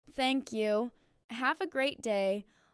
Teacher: Put a stress on great so it sounds warm and sincere.